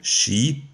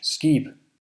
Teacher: in the Norwegian word, sk represents sh, while in the Danish word, it represents sk.